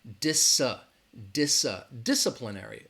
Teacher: the stress is on that first syllable dis disciplinary disciplinary again that second syllable has that schwa